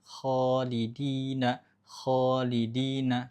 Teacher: lidah bagian belakang dinaikkan sedikit agak ke langit-langit. Lidah bagian belakang saja. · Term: huruf tebal